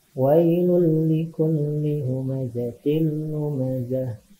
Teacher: Wailul likulli. Ada domah tanwin menghadapi huruf lam. Berarti idgham bila gunnah ya. Cara membacanya tidak berdengung, tidak ditahan.